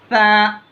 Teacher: ज़बान की नोक को ऊपर वाले दांतों के किनारे से लगा के पढ़ेंगे तो सा अदा होता। सा, ये दो हरफी है, इसको ज़्यादा नहीं खींचना।